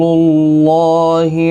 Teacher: اللہ کا لام اس پیش کی وجہ سے پر پڑھا جائے گا، اس کے اوپر کھڑی زبر بھی ہے، ایک الف کی مقدار کے برابر کھینچ کر بھی پڑھا جائے گا۔